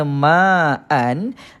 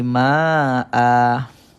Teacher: baris dua di atas yang diwakafkan bacaan maka digugurkan satu baris asalnya maan dibuang satu baris jadi Maa dan panjangnya sekadar dua harkat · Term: Mad ewat